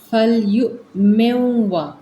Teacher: یہاں پہ میم کو واو کے اندر ادغام کریں گے